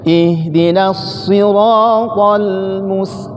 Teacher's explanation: Bunyi tetap tim tapi bibirnya datar